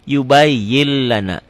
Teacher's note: Idgham diidghamkan, dileburkan tanpa didengungkan, tanpa ditahan. Yubayyin lana dibacanya jadi yubayyin lana. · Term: Idgham bila gunnah